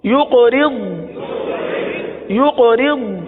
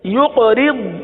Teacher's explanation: یہاں قاف پر قلقلہ کریں گے. را کو تو باریک پڑھیں گے لیکن ضاد کو پر پڑھیں گے